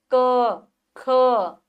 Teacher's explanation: बोल के देखिए आवाज कंठ से आपको निकलेगी।